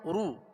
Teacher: دونوں ہونٹوں کو کامل گول کر کے ادا کریں گے. اگر کامل گول نہیں ہوں گے تو پھر رو سو لو یہ بن جائے گا، اور یہ ہے معروف مجہول طریقہ. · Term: پیش